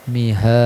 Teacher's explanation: Mihad qalqalah kubro ya, di akhir kalimat ya